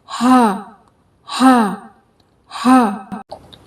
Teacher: اس کی آواز سینے کے قریب سے نکلتی ہے